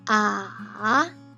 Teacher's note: third tone, you see even lower, and there's a twist. You go down and raise it. Ah. This is the longest one.